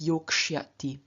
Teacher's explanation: And so we have yok, sya, ti. After the k, sya becomes shya due to ruki